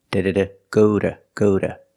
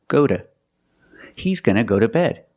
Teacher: When I say go to bed, the pronunciation changes. The T is a fast D.